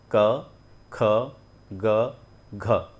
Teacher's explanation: ना तो मैंने होठों को भिड़ाया, ना जीभ का इस्तेमाल किया, ना मुंह को खोला बंद किया, सिर्फ हमने कंठ को कंट्रोल करते हुए ही इसका उच्चारण किया है